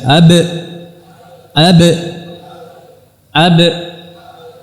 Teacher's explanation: ba dengan merapatkan dan menekan karena dia sifatnya syidah